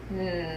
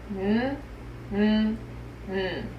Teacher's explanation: To make this sound, we put our tongue on the bumpy part behind our top teeth. We keep our lips and our teeth slightly open and we hum. N. Our voice should be on for this sound, which means there should be buzzing in our throat. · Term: nose sound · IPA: /n/